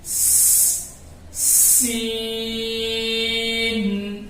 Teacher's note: سین کو ادا کریں گے تو اس میں ہلکی باریک سی سیٹی کی آواز آئے گی